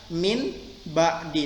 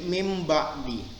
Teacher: yang biasanya kita ucapkan n, maka dia akan berubah jadi m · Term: iklab